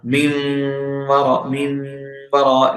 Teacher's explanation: Let the voice go to nasal and produce a Ghunna and merge as well.